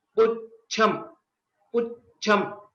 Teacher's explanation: Cha is a Mahaprana here, and it is also a Samyuktakshara, Ch and Ch. While we are pronouncing, we give a small pause or a bit extension after Pu.